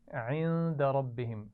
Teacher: عند ربهم اس نون ساکن پر غنہ ہوگا. ربهم میں را کو موٹا پڑھنا ہے